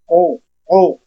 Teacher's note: काबे की किताब और लफज़ अब हम इसी काफ को मोटा पढ़ेंगे। लेकिन होठ आगे से गोल करने हैं ताकि पेश अदा हो जाए।